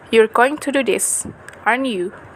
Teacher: If we form a separate IP on the tag question and place a falling tone on it, the tag invites agreement.